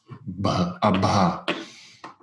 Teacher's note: That's a stop pronounced with breathy voice.